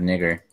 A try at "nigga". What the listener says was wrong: Hey, don't put that R on there. No, nigga. You don't say nigger. You say nigga. Nigga.